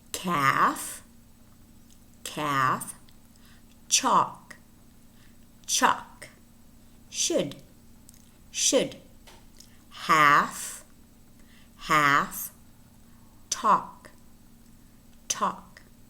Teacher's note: words in which the L is not pronounced